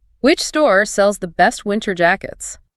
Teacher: Feel the physical stress on store, best, and jackets. The other words are just the connective tissue we talked about earlier.